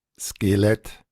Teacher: Esto tiene de curioso el choque entre una E cerrada y una E abierta